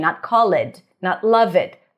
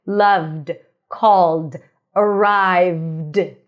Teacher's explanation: We do not pronounce the vowel in between.